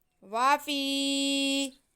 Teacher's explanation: یا ساکن سے پہلے زیر ہو تو یا مدہ ہوتی ہے، اس لیے فا کی آواز کو ہم کھینچ کے پڑھیں گے